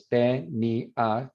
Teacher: tenía where there's no diphthong, because that's accented, so it's a full vowel, so it's te, ni, a, 3 syllables